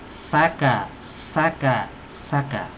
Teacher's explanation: Nafsa, sa ya, harus jelas karena dia punya sifat shafir